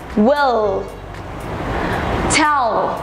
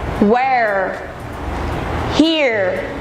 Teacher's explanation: Đối với âm L, đầu lưỡi của các bạn sẽ chạm vào phía trong của hàm răng trên. Ví dụ như will, tell. Còn đối với âm R thì lưỡi của các bạn cần phải cong hẳn về phía sau nhé. Ví dụ như where, here.